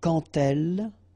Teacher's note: So like that, quand elle, all right, same rule here. Remember, when you will have this d, you will phonetically pronounce it like t.